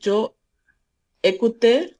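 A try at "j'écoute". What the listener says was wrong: না জয়কুতে কেন? জেকুত একসাথে, ভাও দিয়ে শুরু হয়েছে, তাহলে জেকুত।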